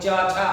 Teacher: और च वर्ग की अगर आप बात करते हैं तो च, छ आपका अपने आप जीभ जो है ऊपर वाले पार्ट को स्पर्श करती है, तालु को स्पर्श करती है